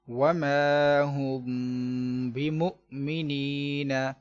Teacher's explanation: میم ساکن کے بعد با موجود ہے، لہذا ہم نے یہاں پر اخفاء شفوی کا قاعدہ استعمال کرتے ہوئے گنہ کرنا ہے